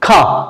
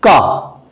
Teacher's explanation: खा जब बोलेंगे तो मुंह से ज्यादा हवा निकलेगी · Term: महाप्राण